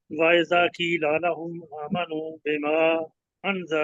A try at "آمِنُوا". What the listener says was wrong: اچھے طریقے سے نا آمنو نہیں ہے میم کے نیچے زیر ہے آمنو